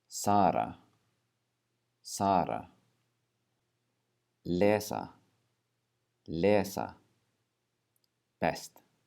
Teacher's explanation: the Icelandic s is slightly more relaxed in your mouth so sometimes it will come across as kind of an SH sound